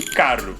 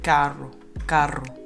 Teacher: Falam um R seco com a língua atrás dos dentes